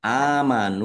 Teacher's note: nun dumah wau sukun juga mad thobi'i dibaca panjang dua harakat